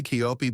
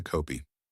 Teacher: 커피의 커는 입술에 힘을 빼요. 동그랗게 하면 코피가 돼요.